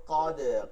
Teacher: কদ দালে জজম হবে, কল কলা করে পড়তে হবে দাল